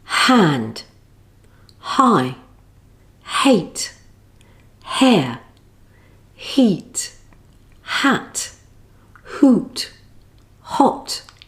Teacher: /h/ is produced with the mouth shaped, according to the following vowel.